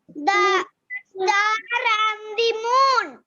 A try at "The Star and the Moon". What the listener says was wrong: The Star and the Moon. And my dear, it's not star. Ra is silent. Whenever the Ra is coming towards the end, whenever the Ra sound is coming towards the end, it's silent. In most of the cases, it's silent. That's why we say car, star.